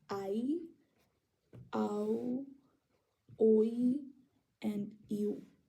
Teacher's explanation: they're all supposed to be said within the same syllable, like how the diphthong is. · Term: diphthongs